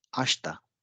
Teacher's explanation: आशिता में अब शी और ता यानी कि श और थ, इन दो ध्वनियों के बीच में ई है, इसलिए ये लगभग मौन हो जाएगा और इसका उच्चारण होगा आश्ता।